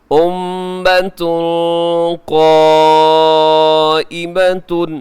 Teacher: امۃ میم مشدد غنہ ہے، اور یہاں بعد میں اخفا بھی ہو رہا ہے